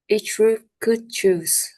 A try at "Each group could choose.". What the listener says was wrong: I dislike the way that you pronounce these words. It felt like you were saying one word at a time.